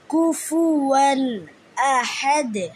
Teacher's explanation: হা কণ্ঠনালীর মধ্যখান থেকে উচ্চারিত হবে।